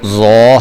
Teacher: اب یہ ضو ہے، اب یہ حروف کے ہجے کرنے سے پہلے میں آپ کو تھوڑی چھوڑی چیزیں جو ہے وہ ساتھ ساتھ بتاتا جاتا ہوں۔ ضو جو ہے یہ حروف مستعلیہ میں سے ہے، اس کو ہم نے پر کر کے پڑھنا ہے۔ واو ساکن ہے، واو ساکن ہو تو ہم اس کو کہتے ہیں یہ حروف مدہ میں سے ہے، اس کو تھوڑا لمبا کر کے پڑھنا ہوتا ہے۔